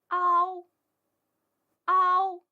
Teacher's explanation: 我们在发音时，先把嘴巴张开，发啊的样子，再把嘴逐渐拢圆，发▁o▁的音。读音由啊滑动到▁o，▁注意连贯。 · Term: 复韵母▁ao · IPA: ɑo